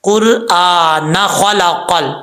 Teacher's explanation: خا حروف مستعلیہ میں سے آپ پر پڑھیں گے